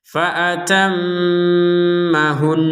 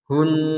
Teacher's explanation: Kalau nun bertasydid harus dengung. Jadi harus dengung, dengungannya dua, panjangnya 2 harokat. Fa'atammahun, jadi agak ditekan.